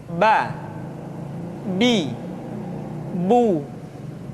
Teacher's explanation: Yang kedua, huruf Ba. Huruf Ba dikeluarkan dengan cara merapatkan kedua bibir kita.